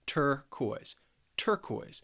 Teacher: turquoise has two syllables and the stress is on the first syllable.